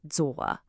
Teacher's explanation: You hear that third tone. It has a little dip and then a rise.